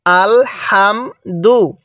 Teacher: হাটা উচ্চারণের সময় মুখ দিয়ে হালকা বাতাস বের করব।